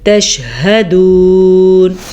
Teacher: ہاں کا دھیان رکھنا ہے، یہ دو آنکھوں والی ہاں ہے اور یہ سینے سے نکلتی ہے